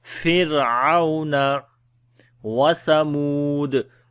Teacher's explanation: This ra we read in light sound because ra has a sukoon sign and there is a kasra before the ra. But after the ra, the next letter is not a isti'la letter, like not a heavy letter.